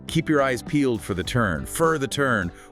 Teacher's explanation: The word for often reduces to a weaker sound like fur or just fur when it's unstressed.